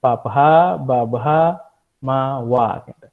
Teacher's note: Ostia niki pertemuan antara bibir atas dengan bibir bawah